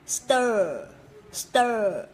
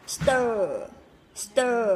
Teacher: mình sẽ phải dùng cái lưỡi của mình, nó sẽ cong lên nha. Ở trong cái vòm họng của mình, mình khi mình phát âm ấy thì cái lưỡi của mình sẽ cong lên như này. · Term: âm ơ